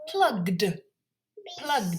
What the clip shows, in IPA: plʌgd